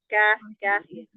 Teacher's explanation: Kalau qof tuh ke belakang. Kaf tuh di depan ya. K ka ada anginnya tuh. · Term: huruf kaf